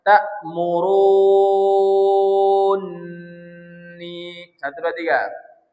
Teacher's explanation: Jadi takmurun ini dibaca enam harakat wajib onam ya. Lazim ya lazim. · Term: Mad lazim